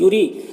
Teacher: यूरी रॉ के नीचे ज़ेर, रॉ को बारीक पढ़ना है, और यहाँ पर या मद्दा है, एक अलिफ के बराबर खींचेंगे